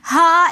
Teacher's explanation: ہا کے ساتھ جو الف ہے یہ بھی الف مدہ ہے، تو اس وجہ سے ہا 1 الف کی مقدار ہم اس کو کھینچ کر پڑھیں گے